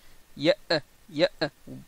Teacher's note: La sortie du hamza se fait par fermeture complète des cordes vocales. Donc ça fait par exemple ya, ya.